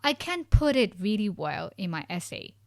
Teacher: We put stress on the negative word like I can't put it.